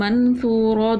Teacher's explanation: واو مدہ تھا ایک الف کے برابر کھینچا, دو زیر کی تنوین تھی, اس کو کیا کیا ہم نے غنہ کر کے پڑھا.